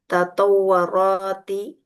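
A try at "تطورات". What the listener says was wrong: Tatawurati. Wawunya di dhammah.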